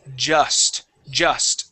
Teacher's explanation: instead of saying Juiced the word has a short u sound